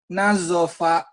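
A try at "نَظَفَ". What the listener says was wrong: Nazofa. Bagus.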